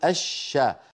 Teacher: الشمس ندغم اللام في الشين فنقول الشا، ولا نقول الشمس، ما أحد يقول الشمس.